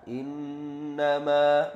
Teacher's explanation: di situ ada gunnah, innama, gunnah musyaddadah, berdengung 2 harokat. Ya, ditahan 2 harokat.